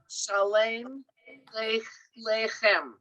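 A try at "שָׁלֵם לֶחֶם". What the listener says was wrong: Wow, that was great.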